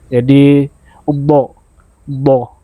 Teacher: Tapi kalau saya pribadi sudah terbiasa dengan ee mengangkat sisi lidah sebelah kiri ke arah gigi geraham bagian ee atas kiri